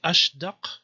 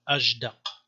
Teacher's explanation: Sheen pronounced like Gene probably means voiced